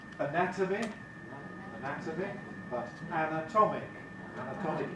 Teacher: Anatomic, effectively ic suffix, but notice what happens to the vowels. The first vowel is weak in anatomy, strong in anatomic.